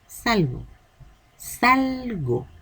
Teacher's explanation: La voz carga en sal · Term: sílaba tónica